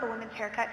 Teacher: haircut is stressed more than women's